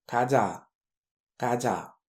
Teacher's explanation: Le kyok qui est en premier, il va être sourd, tandis que le tiet qui est en deuxième, lui, va être sonore.